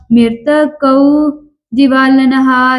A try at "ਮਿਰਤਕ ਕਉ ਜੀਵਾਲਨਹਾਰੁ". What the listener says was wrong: ਕਾਉ ਨਹੀਂ ਕਰਨਾ ਕਉ ਮਿਰਤਕ ਕਉ